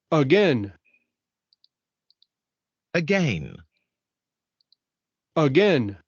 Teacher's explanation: En la sílaba acentuada se va a pronunciar esta vocal, que sería la vocal semiabierta anterior no labializada, y en la sílaba inacentuada aparecería el sonido schwa.